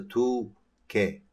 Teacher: In case of 2, 3, and 4, as you can see, when the number and the counter are articulated, the final consonant, which is 받침 in Korean, has been dropped out. As a result, in number 2, the final consonant, 리, 을, is disappeared, so you can read as a 두, 개, instead of 둘, 개.